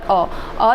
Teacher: मध्य भाग से केवल एक ही प्रयोग करते हैं, केवल अ जो है केवल मध्य भाग से। अ स्वर केंद्रीय स्वर होता है, इसके उच्चारण में जीभ का मध्य भाग थोड़ा सा ऊपर उठता है